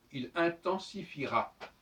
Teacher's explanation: quand on écrit il intensifiera, on n'entend pas non plus le E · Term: E muet